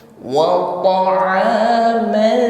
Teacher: Jangan ketika mengucapkan wa yang tipis ikut-ikutan menjadi tebal karena terpengaruh bunyi to. Bukan woto, wanya ikut tebal, padahal yang tebal po, sedangkan waw tetap huruf tipis.